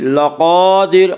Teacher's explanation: قاف کو پر پڑھیں گے، قاف حروف مستعلیہ میں سے ہے۔ حروف مستعلیہ 7 ہیں جن کا مجموعہ خصہ ضغط قز ہے، جو ہمیشہ ہر حال میں پر پڑھے جاتے ہیں۔